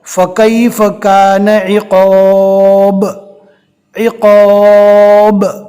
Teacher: با کو پڑھا، فوراً اس کے مخرج کو ہم نے الگ کر دیا۔ با کے نیچے زیر ہے لیکن رکنے کی حالت میں جزم آ گیا۔ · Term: قلقلہ